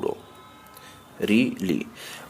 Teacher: বাংলায় এই দুটি স্বরের উচ্চারণে যথাক্রমে ঋ ও লি অর্থাৎ ব্যঞ্জনবর্ণ র ও ল এর সঙ্গে ই যোগ করে এদের উচ্চারণ করা হয়